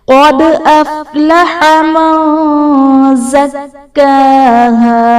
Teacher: نون ساکن کے بعد حروف اخفاء میں سے زا ہے، تو یہاں پر اخفاء کا غنہ کریں گے